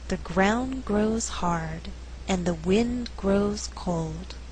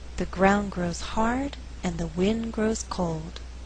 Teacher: In this slower reading, all content words are stressed. They are ground, grows, hard, wind, grows, cold.